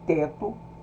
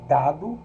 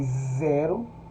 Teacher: Nós temos as dentais, formadas pela aproximação do pré-dorso da língua à face interna dos dentes incisivos superiores